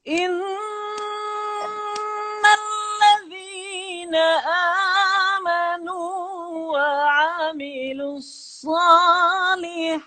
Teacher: Dengung yang nun dan mim yang ada sabdu itu gunnah yang kritikal. Artinya kena bagi innalladzina amanu wa amilus salihat.